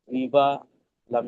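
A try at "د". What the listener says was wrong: লাম নাই, ডাল। জি, ডাল, ওটা লাম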